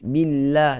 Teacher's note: Kalau sebelum lafzul jalalah berbaris di bawah, sebab itulah kita baca dengan nipis. Billah. Tak ada orang baca dengan billahi.